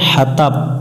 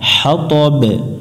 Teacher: দম ফেলার আগে জের পাইছি, জেরটাকে সাকিন ধরে নিব এবং এখানে কলকলা করে নিব আমরা।